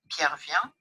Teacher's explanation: a falling contour, that's what occurs in assertion